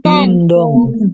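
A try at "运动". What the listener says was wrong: bacanya bukan dong, tapi tong. Yuntung.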